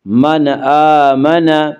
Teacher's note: من آمن، حمزہ کے اوپر کھڑا زبر ہے، کھڑا زبر کو 1 الف کے برابر کھینچ کر پڑھیں گے